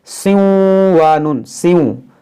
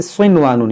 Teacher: یعنی یہاں پر یہ نون ظاہر ہوگا، اس نون کو اس واو میں یہاں پر داخل نہیں کریں گے ۔ اگر ادغام ہوتا تو کیسے پڑھتے؟ سیوں وانون، سیوں، لیکن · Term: اظہار مطلق